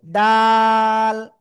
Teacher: জিহ্বার আগা উপরে দুই দাঁতের গোড়ায় লাগাবো, লাগিয়ে 3 আলিফ টেনে পড়বো